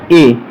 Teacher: जब हम बोलेंगे ए तो इसमें कंठ और तालु दोनों का एक साथ प्रयोग होता है दोस्तों, इसलिए इसे कंठ तालव्य बोलते हैं दोस्तों।